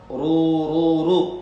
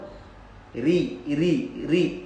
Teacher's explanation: Ketika ro berharokat dhammah, ru, itu juga tafkhim. Ketika ro berharokat kasroh, nah ini baru ri, itu tarqiq namanya, tipis ro-nya.